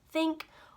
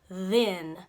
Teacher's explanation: it's a tongue sandwich sound because your tongue sticks out just a little bit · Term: th sound